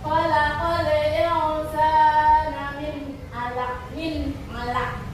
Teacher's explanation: Nun mati nih ya, bertemu dengan huruf ain. Ini dibacanya jelas, tidak dengung. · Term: izhar haqi